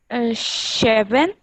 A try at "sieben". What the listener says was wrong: Okay, S sound is Z.